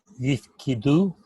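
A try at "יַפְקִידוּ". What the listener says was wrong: But the vowel in the first syllable though is a.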